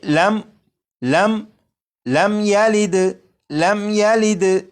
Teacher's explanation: ساکن ہے، میم ساکن کے بعد یہاں پر یا ہے، جب میم ساکن کے بعد یا ہے تو اس میم ساکن میں بھی غنہ نہیں کریں گے